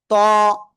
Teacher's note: জিহ্বার আগা উপরে দুই দাঁতের গোড়ায় লাগিয়ে একটু মোটা আওয়াজে আমরা এটা উচ্চারণ করব।